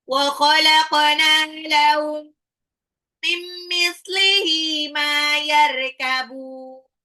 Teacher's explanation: qafnya pantul karena dia adalah qalqala